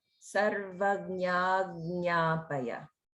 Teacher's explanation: there's a little bit of holding in front of the second nya